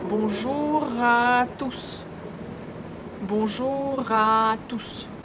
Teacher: I read two words, bonjour and à, as one word.